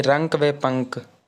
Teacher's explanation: इनका उच्चारण करते समय जो आपका अनुस्वर होता है इनका उच्चारण करते समय वायु केवल नाक से निकलती है